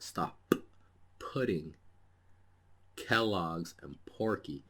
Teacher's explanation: the aspirated sounds produce a strong burst of air after a stop and these are voiceless sounds